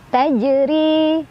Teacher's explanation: Dibacanya dipantulkan, pantulannya kecil aja. Tajri, ro-nya dibaca secara tarqiq karena ro-nya barisnya di bawah. Jadi ini ditipiskan. Tajri, ri mad tabi'i karena ada ya sukun sebelumnya kasrah di ro, dibacanya panjang 2 harokat.